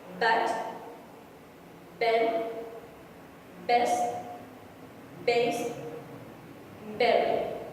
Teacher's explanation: The point of articulation is bilabial upper and lower lip touch each other.